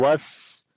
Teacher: سین کے اوپر صفت ہمس ہے، صفت سفیر بھی ہوتی ہے، وس سیٹی کی آواز آتی ہے